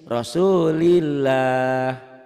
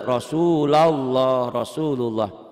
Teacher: kalau sebelum lafadz Allah barisnya di bawah berarti bunyinya a rosulillah Kalau sebelum lafadz Allah barisnya diatas tebel Rosulullah Rosulullah kesimpulannya lah pada Allah bisa dibaca tipis atau tebal